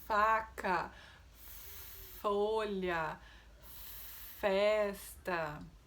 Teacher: E vento, apenas isso. Não temos som na garganta. Então, se a gente ligar o motorzinho por engano, ele vai se transformar no som de outra letra, que seria o V. · produzido através do contato dos dentes superiores com o lábio inferior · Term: O som do F, som do F